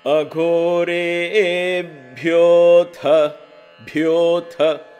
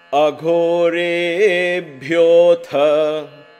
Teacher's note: So gho and bhyo and tha, there is a lot of aspirations and the ha comes along. So a lot of mahaprana is there in this.